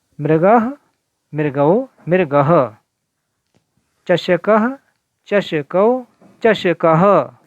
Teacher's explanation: यहाँ विसर्ग हो वहाँ हा की ध्वनि हल्के से उच्चारित करनी है। दीर्घ स्वर में हा को जरा अधिक स्वर, तेज स्वर से बोलना है।